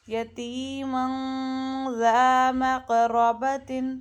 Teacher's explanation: اپنی زبان کو نا جب آپ غنہ کر رہے ہوں تو اپنی زبان کو اس مخرج کے اوپر رکھیے گا جس مخرج سے زال نکلتا ہے. جو ہمارے دانت ہیں نا اوپر والے، سامنے والے دانت، ان کے کناروں سے جا کے آپ کی زبان لگتی ہے جب آپ کا زال نکلتا ہے نرمی سے، تو وہاں رکھتے ہوئے غنہ کیجیے گا، پھر صحیح نکلے گا.